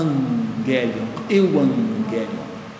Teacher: Eu tenho 2 gamas, angelion, ok? Esse vai ter 2 gamas, sendo que o primeiro eu pronuncio como N. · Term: nasalização do gama